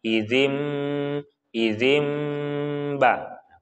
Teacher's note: Nun sukun di sini bertemu dengan ba, namanya iklab. Iklab itu berarti dimasukkan menjadi mim. Nah, maka sini ada tanda mim biasanya.